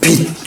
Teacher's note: 요것도 치읓도 발음을 디귿으로 합니다